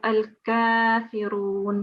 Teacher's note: It's just a plain Gaf. It's not the one which is coming from the throat, which is Qaf. So we have to distinguish between these two sounds.